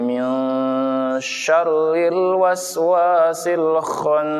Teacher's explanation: Karena ikfa maka dibaca samar atau dengung.